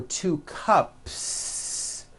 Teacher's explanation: Well then if you add an S to the word cup to make it plural, the S you add also remains unvoiced.